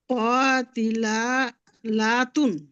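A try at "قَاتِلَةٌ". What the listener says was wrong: লাতুন না, লাতুন। লা টান হবে না, লাতুন, হ্যাঁ।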